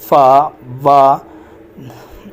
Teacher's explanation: the upper front of teeth are brought into contact with the lower lips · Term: लेबियोडेंटल